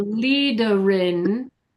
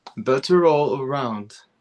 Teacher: you need to connect the R in leader with the word in